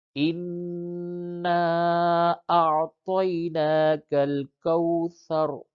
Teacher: اس میں تا کی ادائیگی میں خاص طور سے دھیان دیں گے، کیونکہ دو نقطے والا با کی شکل کا جو تا ہوتا ہے وہ باریک، اس کو تا بولتے ہیں، اور یہ تو کوثر، را کے اوپر زبر ہے اور آگے آیت ہے، آیت پہ وقف کیا جائے گا تو اس زبر کو ہٹا کے را کو ساکن کر دیں گے